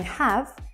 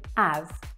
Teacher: the H at the start of words is often not sounded out